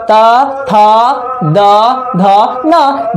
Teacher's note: जो जीभ होता है, टोंग, जीभ ऊपर वाला दांत में सटता है ना